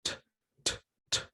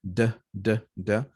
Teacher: The only difference is that one, the T is voiceless, meaning no vibration, and the D, D, D, D is voiced. So there is vibration, but they have the same point of articulation.